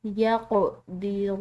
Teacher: اس کو الف کی وجہ سے کھنچاؤ دیا ہے لا یقدرون، قاف حروف قلقلہ میں سے، ٹھیک ہے، یہاں پر ہم نے اس پر قلقلہ کرنا ہے، اس کو ہلا کر ادا کرنا ہے